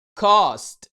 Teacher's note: وده وقته طويل ومفخم ومفتوح شوية، يعني ما تضموش قوي وتقول لي cost. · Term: a sound